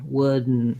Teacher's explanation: we kind of go right from a stopping D into a syllabic N